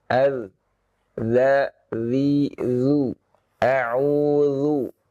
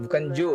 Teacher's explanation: Nah, perhatikan ya, huruf zal ya. Huruf zal dari ujung lidah bertemu dengan gigi seri atas ya.